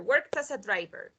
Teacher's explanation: so we're going to connect the t with the a